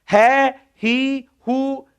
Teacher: विसर्ग तो एक ही था, कभी है की ध्वनि, कभी ही की ध्वनि, कभी हु की ध्वनि, और वो भी है, ही, हु, वही स्वर लग रहा है जो पहले है। जो यहां विसर्ग से पहले ए था तो है में भी ए लग गया, विसर्ग से पहले ई था तो है में भी ई लग गया, विसर्ग से पहले उ था तो है में भी उ लग गया, विसर्ग से पहले ओ था तो है में भी ओ लग गया, मतलब चेंज हो गया।